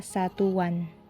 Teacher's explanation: akan muncul bunyi pelancar w apabila sebuah kata yang berakhir dengan bunyi u diberi sufiks an